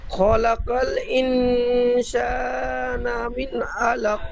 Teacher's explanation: কফের নিচে দুজে তানবিন, কিন্তু এখানে আয়াতের শেষ, তাই সাকিন করে আগের অক্ষর কফকে সাকিন করে কলকলা পড়তে হবে। কফকে সাকিন করে আগের অক্ষরের সাথে মিলিয়ে কলকলা করে পড়তে হবে